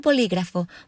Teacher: Bolígrafo means pen, and here I have the word bolígrafo divided into syllables. Also notice that the stress falls on the second syllable